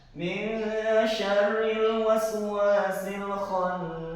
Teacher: cara membaca khannasnya disyiddahkan karena ini adalah gunah nun.